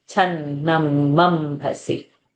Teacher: Is channam ambhasi, maintaining the mahaprana of bha and keeping c crisp short at the ending